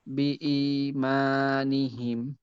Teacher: বি ইমান, ই কে যতটুক টানবো মাকেও হুবহু ততটুকু, মায়ের ক্ষেত্রে জি, যেন একটু বেশি হয়ে না যায়।